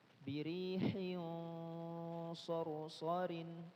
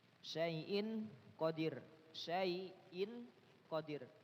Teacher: ikhfa yang punya sifat isti'la, maka gunnahnya dibaca tebal